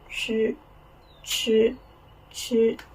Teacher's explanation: sh is a retroflex sound. Your tongue curled back. · When you pronounce this sound, it looks like the sound in English that is ch. But ch is a retroflex sound. Your tongue curled back.